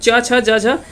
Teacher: च वर्ग जो है वो किससे संबंधित है। च छ ज झ ये सभी जो होता है वो तालु से इसका उच्चारण होता है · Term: तालव्य